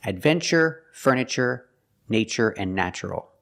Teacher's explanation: We pronounce the TU with the ch sound, like chicken, when there's no stress after the T. In these words, there's no stress after the T, so we pronounce it ch.